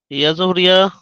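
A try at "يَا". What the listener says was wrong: ইয়া জবর না, ইয়া গয়েন জবর ইয়াও, ইয়া গয়েন জবর ইয়াও।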